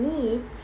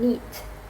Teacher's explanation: the E sound in need is longer than in neat